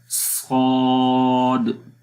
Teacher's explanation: زبان کی جو جڑ ہے وہ اوپر تالو کی طرف اٹھ رہی ہے، مطلب کہ آواز تالو کی طرف جا رہی ہے۔ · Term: استعلا